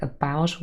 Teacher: Before we just had a word like about, where you had a full syllable only consisting of the schwa